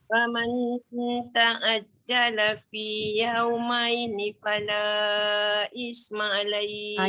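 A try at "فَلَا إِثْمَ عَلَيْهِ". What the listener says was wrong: Jaga tha fala ithma alaih. Keluarkan sikit lidah ithma alaih.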